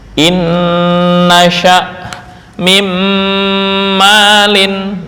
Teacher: idgham sempurna disertai gunah, yaitu nun sukun atau tanwin ke dalam nun dan mim